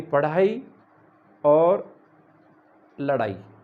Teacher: हिंदी में प्रायः इनका ज़्यादा प्रचलन है और इनको जो उत्क्षिप्त वर्ण के नाम से इनको बोला, यानी इसमें ये द्विस्पृष्ट हैं। ये इनको जब हम उच्चारण करते हैं तो इनका जिह्वा का जो स्पर्श है वो मुख में 2 बार होता है, यानी 2 बार टच करती है जिह्वा